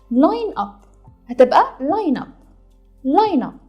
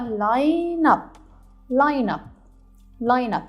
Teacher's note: كلمة line آخرها E، والإي احنا قلنا إن هو من الفاولز، ولكن آخر صوت سمعته هو الN، الN sound، فقلت line، ما قلتش الإي. فنفس الكلام هنطبق القاعدة تبقى line up.